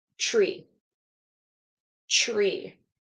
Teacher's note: so when it's a TR it's a CHR